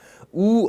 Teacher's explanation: 이 하고 발음했을 때 이, 자, 혀가 앞으로 쑥 밀려 나오는 느낌이 분명히 나실 겁니다. 그 다음에 우 하고 발음하면 혀가 뒤로 쑥 빠지는 느낌이 납니다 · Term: 후설모음